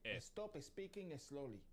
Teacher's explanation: English has words starting with S, followed by one or two other consonants, but this doesn't happen in Spanish. Spanish adds an E sound before this